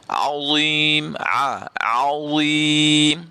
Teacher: dha ini memiliki sifat istiqla, iaitu tebal, kena tebal sebutannya. Azim, jangan bunyi azim, dia jadi zain.